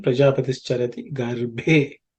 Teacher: This bha is the fourth letter in the pa varga, so it has to be aspirated.